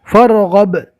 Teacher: الف نہیں پڑھا جائے گا، فا کو ڈائریکٹ رو سے ملائیں گے۔